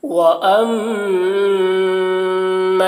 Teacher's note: میم مشدد ہے، میم میں غنہ کریں گے